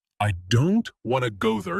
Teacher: Now the smaller words like I, to there are said more softly or quickly. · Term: rhythm